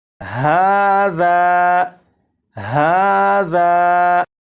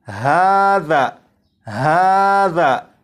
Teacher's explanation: اب یہاں پر دیکھیں یہ ہے الف، الف سے پہلے زبر ہے، اور آپ کو معلوم ہے الف سے پہلے زبر ہو تو الف مدہ ہوگا، اور الف مدہ کو ایک الف کے برابر کھینچ کے پڑھتے ہیں، اور اس لفظ کو پڑھیں گے ہاذا، ہاذا، تو ذال کو ایک الف کے برابر جو کھینچ کر پڑھا گیا ذا، اور اس میں یہ جو آواز ہے ذا، آ، یہ الف مدہ ہے اور اپنے مخرج سے الف ادا ہو رہا ہے۔